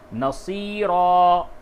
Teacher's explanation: نصیرن دو زبر پہ جب بھی وقف کیا جائے تو الف سے بدل دیا جائے گا